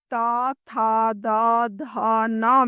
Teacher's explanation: त वर्ग त, थ, द, ध, न में हवा दंत या दांत को स्पर्श करती है।